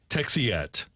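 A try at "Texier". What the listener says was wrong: There's an R in there and not a T, but...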